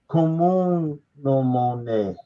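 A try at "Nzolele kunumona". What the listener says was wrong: Kunumona. There's no nasal here. There's no N.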